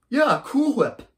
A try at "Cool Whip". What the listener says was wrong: Why are you putting so much emphasis on the H? What's that thing called that you put in cream? And what's that you're eating right now?